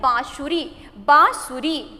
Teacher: हमारी नाक से और हमारी गले से दोनों से आवाज निकलती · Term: अनुनासिक